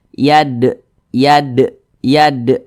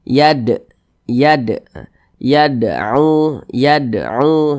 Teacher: Ini dinamakan dengan qalqalah sugoro, qalqalah kecil. Karena dia berada di tengah bacaan. Atau dapat kita pahami karena dia berada di tengah kalimah seperti itu.